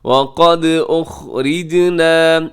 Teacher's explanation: یہاں را باریک ہوگی